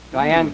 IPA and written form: daɪˈæn (Diahann)